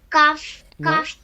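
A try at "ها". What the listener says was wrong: کاف نہیں ہا بیٹا.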